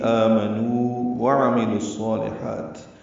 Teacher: عین وسط حلق سے ادا ہوگا، میم جلدی پڑھیں گے. لام کو صالحات کے صاد سے ملا دیں گے، ادغام شمسی ہوگا. صاد پر پڑھیں گے، لام کو باریک پڑھیں گے. · واو کو آگے واو سے ادغام نہیں کر سکتے، وہ مد اصلی ہے، یہ ایسی ہی رہے گی.